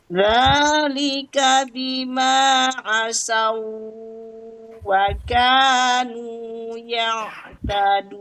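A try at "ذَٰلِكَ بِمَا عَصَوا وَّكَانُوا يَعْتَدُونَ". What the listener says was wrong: Nah, Ibu kalau saw itu tidak isti'la, tidak itbaq sodnya. Jadi bunyinya jadi a. Tapi kalau Ibu isti'la jadi bunyinya ke o-oan. Aso, so, so, aso.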